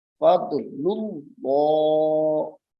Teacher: اس میں جلالت اللہ کا لام موٹا ہو رہا ہے فضل اللہ یعنی منہ کی آواز جو ہے اس کو بھاری